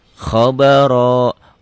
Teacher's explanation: Ro ini berbunyi O ya kalau berbaris fathah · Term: tafkhim